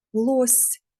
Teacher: Звук л звучить твердо. голосний звук о червоним і звук с звучить м'ягко.